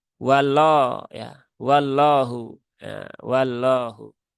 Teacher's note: dia tidak menaikkan Pangka lidah potensi kesalan yang kedua adalah ya terbaca seperti l biasa tetapi divokali O